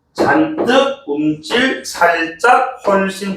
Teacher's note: 울림 소리 자음 받침 뒤에서 나는 된소리들